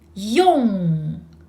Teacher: Nasal final in the back.